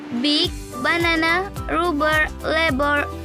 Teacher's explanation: in B there is a vibration in the vocal cord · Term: bilabial, stop